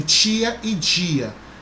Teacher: Existem algumas regiões que as pessoas pronunciam tia e dia, né? Tem esse chiado